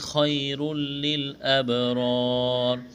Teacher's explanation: تنوین کے بعد لام ہے، ادغام کریں گے، غنہ نہیں کریں گے · یہاں جب وقف کریں گے تو را کو ساکن کریں گے